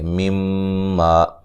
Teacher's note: میم مشدد پہ غنہ ضروری ہے